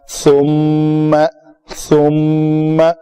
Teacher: میم کا مخرج ہے ہونٹوں کے خشک سے، تو سا کہہ کے فوراً منہ کو بند کر کے خشک چیزوں کو آپس میں ملانا ہے، تر بھی نہیں، تر سے با ادا ہوتا ہے.